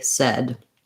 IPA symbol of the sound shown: ɛ